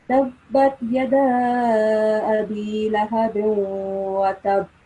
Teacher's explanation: we have to create a slight emphasis on the ba sound here before we produce the jerk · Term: jerking sound